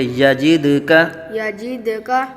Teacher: دال ساکن میں قلقلہ ہوگا، خوب ظاہر کریں گے